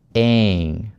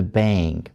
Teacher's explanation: Такой как бы глайд происходит. Не совсем дифтонг, скорее всего глайд, когда с одного звука вы скользите на и.